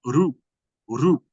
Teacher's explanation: because the tongue goes up to pronounce the R, and then it flaps down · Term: one flap